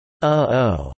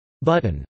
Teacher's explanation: allow syllables to begin with a phonemic glottal stop, the sound in the middle of English, uh-oh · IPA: /ʔ/